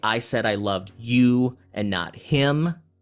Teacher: the you and the him would be stressed because you're using that to focus on those words